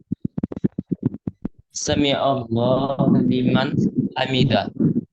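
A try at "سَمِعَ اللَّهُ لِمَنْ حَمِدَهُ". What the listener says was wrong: Kasih baris. Lambat-lambat. Sami Allahu. Hamidahu.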